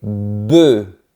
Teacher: Le son est plus fermé et on ne prononce pas les deux lettres finales.